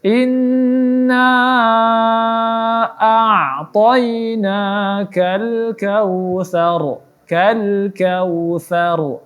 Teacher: ra di sini dihukumi tafkhim atau dibaca tebal karena sebelum huruf ra di sini ada huruf yang berbaris fathah. Maka kita tebalkan.